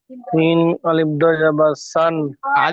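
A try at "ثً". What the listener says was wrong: আলিফ ধরতে হবে না, আলিফ ধরতে হবে না, সিন দুজাবার শান।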